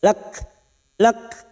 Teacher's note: huruf Kaf sukun yang memiliki sifat Hames